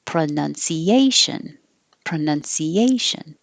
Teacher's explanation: s-i-o-n the syllable before is almost always going to be stressed so it's five syllables stress on the fourth syllable